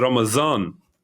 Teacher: the d sound in that is a z sound in certain dialects